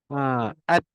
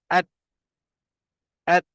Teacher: Suara dia tertahan. Maksud dia tak ada suara bunyi yang keluar lah. At. Dia tertahan je.